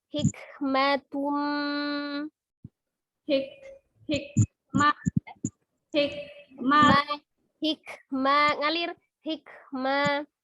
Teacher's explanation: Hikmatum ya ada alhamsnya ngalirin udaranya.